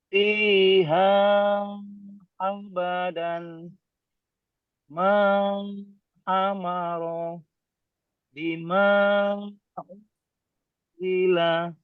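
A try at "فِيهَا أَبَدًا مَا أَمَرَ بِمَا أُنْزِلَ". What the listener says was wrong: Oke, sip. Masya Allah. Barakallahu fiik.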